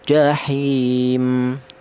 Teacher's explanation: boleh dibaca qasar yaitu pendek satu alif atau dua harakat atau dua ketukan sama dengan mad thaobii juga boleh.